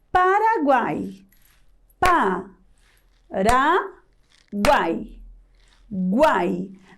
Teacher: na última sílaba nós temos um encontro de três vogais isso se são três vogais em uma única sílaba é ditongo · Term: tritongo